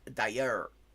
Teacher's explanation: It's all the way in the back of your throat, like French R's generally. But in Quebec, you have the syllable final R that is actually like a very soft anterior R.